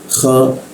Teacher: di atas jakun ada suara seperti ngoroknya kha bergetar ya, bagian dalamnya bergetar